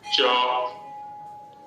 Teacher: च, देखिए ट में तो एकदम जिह्वा का अग्रभाग स्पर्श करता है, लेकिन च में अग्रभाग नहीं, अग्रभाग से थोड़ा पीछे की ओर